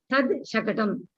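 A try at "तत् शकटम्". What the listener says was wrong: Not tad. The screen, it is tat only, is not tad. Tat shakatam. T-A-T, not T-A-D.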